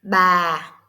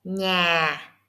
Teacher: It goes down smoothly, not fast like heavy tone. It is slow like a feather falling. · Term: falling tone